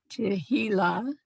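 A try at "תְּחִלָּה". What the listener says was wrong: It's a ch. A ch. Techila.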